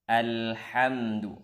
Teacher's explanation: Di pangkal tenggorokan. Jelaskan hamzahnya. Alhamdu, hamzah wasalnya jelaskan.